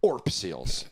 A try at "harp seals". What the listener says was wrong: harp seals with an H.